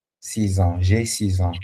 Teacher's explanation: So the X will sound as Z. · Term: liaison